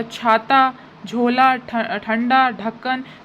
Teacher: हमारी वायु भी ज़्यादा निकल रही है और हा का प्रोनाउंसिएशन भी आ रहा है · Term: महाप्राण व्यंजन